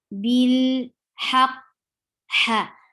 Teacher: for ha, it should be from your throat clearly, middle part of your throat